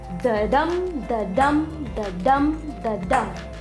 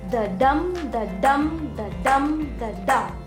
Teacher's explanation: Unstressed, stressed, unstressed, stressed, unstressed, stressed, unstressed, stressed. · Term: iambic meter